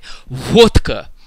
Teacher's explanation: because when russians pronounce the word vodka in russian they say they say a very clear t in the middle of the word even though the word is written with a d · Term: vodka effect